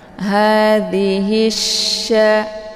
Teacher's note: Cara bacanya yaitu hi-nya dimasukkan ke dalam huruf sya atau dileburkan. Atau kata lain juga disebut dengan idgham syamsiyah karena cara bacanya memasukkan dan alif lam ini tidak lagi dibaca ya.